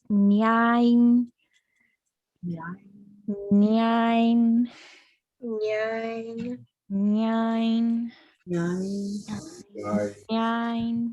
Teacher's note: So yai is pretty common these days, but you might hear this nasalized Y from some speakers.